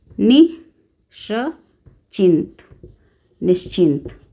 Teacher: तो विसर्ग का परिवर्तन तालव्य श में हो गया है